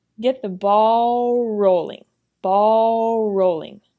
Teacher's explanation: Because the R and the L sounds are so similar, they link together as one sound.